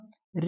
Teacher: री का उच्चारण स्थान जो होगा ये मूर्धा से होगा। मूर्धा, इन्हें मूर्धन्य स्वर भी कहते हैं।